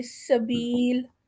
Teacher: سین کی آواز باریک ہوتی ہے اور سیٹی والی ہوتی ہے